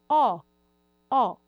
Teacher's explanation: Eu tenho céu da boca também mais elevado. Ó, eu já tenho uma posição mais arredondada, um pouco mais fechada do que a.